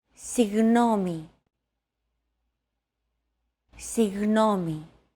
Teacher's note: Another approach is to try to pronounce a G as if an H sound were to follow after it and hold that sound while you exhale. The after sound created by that H is what you're looking for.